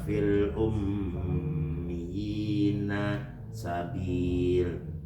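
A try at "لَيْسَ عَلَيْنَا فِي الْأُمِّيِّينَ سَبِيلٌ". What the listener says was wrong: Jangan diwakaf di situ.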